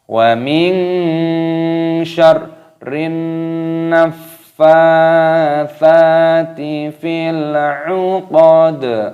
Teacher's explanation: Fil 'uqad, dalnya berharokat kasroh, maka ketika ada tanda berhenti, tanda waqaf ini, maka dimatikan dalnya dan ditambah dengan qalqalah ataupun pantulan suara.